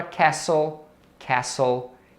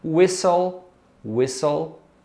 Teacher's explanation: existem outras palavras que esse T no meio da palavra é mudo